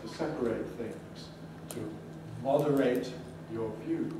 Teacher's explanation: you may notice that in verbs ate is always strong